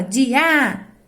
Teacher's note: Então, a sílaba tônica é a última ou a penúltima? É a penúltima, que é o di.